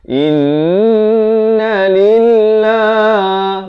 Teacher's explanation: Lafz jalalah 2 harakat di sini. Dibaca nipis.